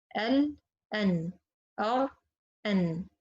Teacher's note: را and لام are closer to articulation point of noon.